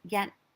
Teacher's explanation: a straight line um and y-a-t is yet there's no h it's a high tone it's the highest tone